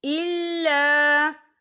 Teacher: مِمَّا آتَيْتُمُوهُنَّ شَيْئًا إِلَّا، یا دیکھیں الا، خال الف سے پہلے زبر ہے، الف مدہ بھی ہو رہا ہے اور اس پر چھوٹی سی مد بھی ہے، تو ہم اسے 4 حرکت کے برابر کھینچ کے پڑھیں گے